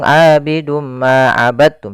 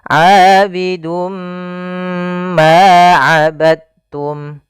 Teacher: Maka pada lafal ini kita cara membacanya adalah kita masukkan tanwinnya kepada huruf mim, kemudian ditahan. Abidum ma, tahan ma, baru dilepas. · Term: idgham bi gunnah